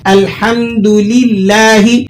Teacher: لفظ اللہ کو یہاں آپ نے پر کیے بغیر پڑھنا ہے، یعنی باریک پڑھنا ہے۔ الحمدللہ، لفظ اللہ کو پر کرنے سے بہت بڑی غلطی ہو جائے گی۔